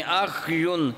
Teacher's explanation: خا کی آواز کو ختم نہ ہونے دیں اور یا کو شروع کر لیں۔